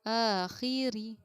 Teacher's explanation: را کو ہم باریک پڑھیں گے کیونکہ را کے نیچے زیر کی حرکت ہے